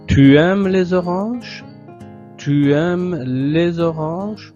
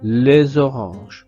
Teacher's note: le S va se connecter avec le O de orange et créer la syllabe orale zo